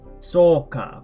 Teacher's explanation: what this extra u after the o does is it actually elongates the sound, the vowel, and it's always after an o sound, like soka.